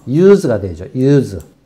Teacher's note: 이게 동사가 돼서 사용하다라는 동사로 사용되면은 발음이 유성 발음답니다. 유성음.